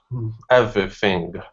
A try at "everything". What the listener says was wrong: Your V is sounding good. Give me a good TH. Use your tongue instead of your teeth and lips. Okay, this is a teeth and tongue sound. Everything.